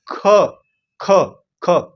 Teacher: जोर से बोल रहे हैं तो उसको मतलब क्या हो जाएगा प्राण हमारे ज्यादा निकल रहे हैं तो इसका मतलब क्या हो जाएगा महाप्राण